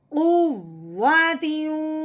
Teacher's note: वाओ पे होंठ गोल होते हैं तो हमने गुना करते हुए होंठों को गोल करना है।